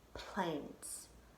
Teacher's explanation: planes only get one puff of air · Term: syllable